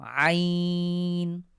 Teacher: এখানে যেহেতু ওয়াকফের চিহ্ন আছে আমরা নুনের উপরে সুকুন দিয়ে আইটাকে এক আলিফ টেনে পড়ব